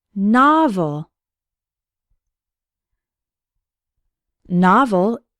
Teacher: novel has two syllables and the stress is on the first one